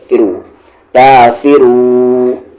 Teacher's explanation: رو کے ساتھ واو، رو، کافرو، یہاں پر کافیرو نہیں کہیں گے آپ، فرو کہیں گے، فی کو جلدی پڑھیں گے